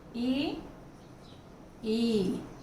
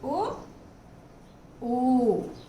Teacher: ई में जब उच्चारण किया जीभ आगे रही और ऊ में जब किया तो जीभ पीछे चली गई। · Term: अग्र स्वर